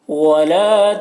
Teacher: ولا لام الف مدہ ہے، ایک الف کے برابر کھینچ کر پڑھنا ہے اسے